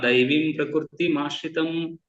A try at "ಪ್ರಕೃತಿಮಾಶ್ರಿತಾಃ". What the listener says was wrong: ಮಾಶ್ರಿತಾಃ. ಇಲ್ಲಿ ವಿಸರ್ಗ ಇರುವಂತದ್ದು. ಮಾಶ್ರಿತಾಃ.